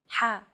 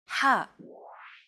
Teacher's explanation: You want to make an H sound, but with the throat constricted a little.